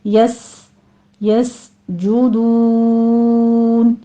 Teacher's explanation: یس یس جدون نہیں ہے، جیم کے اوپر ضمہ ہے، ہونٹ گول کر لیجئے، سین کے اوپر سیٹی کی آواز ہوگی۔ یس یس جودون، آخر پہ مدارس وقفی کر لیں گے، 6 کاؤنٹ کر لینا ہے۔